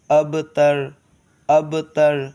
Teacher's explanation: یہ را کو موٹا پڑھیں گے، اس لیے کہ را سے پہلے والے حرف پر زبر ہے اور اس پر موٹا پڑھنے کا حکم ہے را کو۔